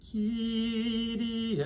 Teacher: Sounds like a flipped R.